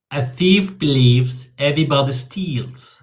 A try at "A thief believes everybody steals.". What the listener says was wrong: Very nice.